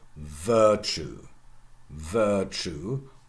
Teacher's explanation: germanic primary stress on the first syllable